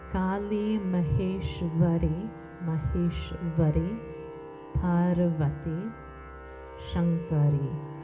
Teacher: with the R sound, you're tapping the roof of the mouth. So it doesn't sound like the English R. So it's like you're hitting the tongue on the roof.